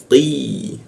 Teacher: lidahnya kita naikkan sehingga membacanya itu tidak ada hembusan udara